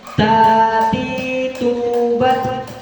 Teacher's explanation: Ketika ta ini sukun, maka dia ada sedikit mengalir suaranya. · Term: huruf ta